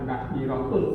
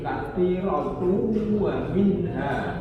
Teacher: Tanwin ketemu dengan waw sehingga masuk di waw. Katsiratu, bukan katsiratun tapi katsiratu wa minha. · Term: idgham